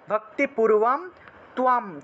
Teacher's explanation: তয়ের নিচে বফলা, বফলা থাকায় তুয়া উচ্চারণ আসলো , আকার এবং ম অনুসার থাকায় ম উচ্চারিত হয়। অর্থাৎ আমরা